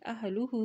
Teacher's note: ہا کے اوپر الٹا پیش ہے تو اس کو ایک حرکت لمبا ادا کریں گے